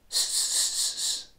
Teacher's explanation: The tip is most likely pointing more or less directly at that funny little ridge, a centimetre or so behind your top teeth. Try instead bunching up the middle of your tongue from behind and try to say an S sound with the middle of your tongue behind that ridge.